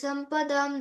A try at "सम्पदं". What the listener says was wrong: భవంతి సంపదాం అన్నట్టుగా వినిపిస్తుంది సంపదం బాగా దీర్ఘం లేదు అందుకోసం భవంతి సంపదం దైవీం అభిజాతస్య భారత ఓకేనా అంతే బాగా చెప్పినావా చాలా బాగా చెప్పినావు ఎన్ని వస్తాయమ్మా